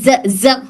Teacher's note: पहले ज बोलने पर हल्का वाइब्रेशन महसूस हो रहा है